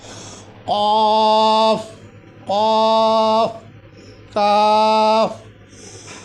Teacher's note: काफ हलक का वो हिस्सा जो बीच वाला है